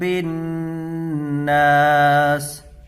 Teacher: یہاں نون کے اوپر تشدید ہے تو اس کو غنہ کے ساتھ ادا کریں گے، اور تشدید والے حرف کو 2 مرتبہ پڑھتے ہیں، ایک بار پیچھے والی حرف سے ملا کر اور ایک بار خود اسے۔